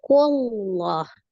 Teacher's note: Sebelum lafuz jalalah berarti dhammah ya. Maka dia dibaca tebal